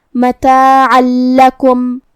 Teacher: لام حروف الادغام بغیر غنہ میں سے ہے تو ہمیں یہ تنوین کو لام میں ملاتے ہوئے تشدید کے ساتھ لیکن بغیر غنہ سے حکم کو ادا کرنا ہے